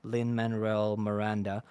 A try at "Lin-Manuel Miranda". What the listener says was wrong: You were really close. You threw like an extra R in there. It's Lin-Manuel, and you said Lin-Manuel.